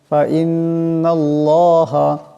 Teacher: আল্লাহ নামের ডাইনে জবর আসছে, আল্লাহ নামকে মোটা আওয়াজে পড়তে হবে